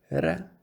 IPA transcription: ɾ